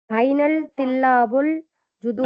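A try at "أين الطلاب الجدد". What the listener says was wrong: ஐனல் இல்ல, ஐனத் ஷம்சியா தானே. பா ஐனத் துல்லாபு.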